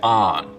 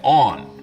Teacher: north of this line, most people say on, rhymes with don. South of it, they say on, rhymes with dawn. Of course, this doesn't apply at all if you rhyme dawn and dawn, only if you have two distinct pronunciations.